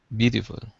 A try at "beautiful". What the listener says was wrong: There's no T. In American English, we say D, not a T. Beautiful.